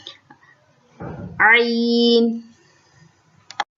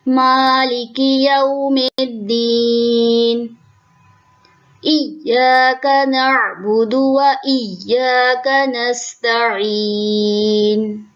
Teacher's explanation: عین ہمارے حلق کے درمیانی حصے سے ادا ہوتا ہے، جس جگہ سے ہا ادا ہوتا ہے، جو ہم پہلے ویڈیوز میں بتا چکے ہیں، عین بھی اسی جگہ سے ادا ہوتا ہے جس جگہ سے ہمارا ہا ادا ہوتا ہے، مڈل ایریا سے، ہمارے حلق کا جو مڈل ہے وہاں سے عین ادا ہوتا ہے۔